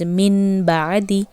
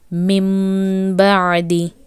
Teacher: When noon sukoon and ba came side by side, you replaced noon sakin with the sound meem, and you also elongated for 1 second. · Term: Iqhlab